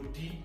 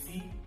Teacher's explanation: Iwájú ahọ́n yóò sún lọ bá èrìgì òkè. Tó bá ti lọ súnbà, ìró tí ó máa jáde ni ìró tí, ìró dí, ìró sí, ìró ní, ìró rí àti lí. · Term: afèrègìpè